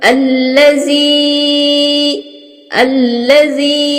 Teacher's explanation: या के ऊपर मद है, इसको मद की तरह अदा करेंगे, लंबा करेंगे, 4 हरकत के बराबर